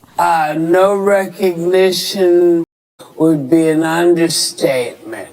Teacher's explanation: 还有就是最后这个单词 understatement statement 两个 t 都是会失爆的